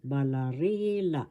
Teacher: First syllable ba, second syllable la, third syllable ri, fourth syllable la. The accent is in the third syllable.